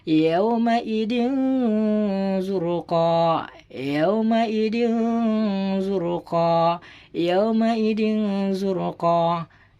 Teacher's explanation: Jadi harus dibaca dengung serta samar ya teman-teman.